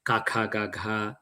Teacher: the ca sound is produced at the back of the mouth